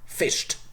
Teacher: He fished. Fish, sh, voiceless, therefore t, fished. You even have to aspirate it.